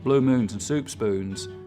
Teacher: there's a lot less goose fronting so the tongue stays further back through that whole vowel sound instead of coming forwards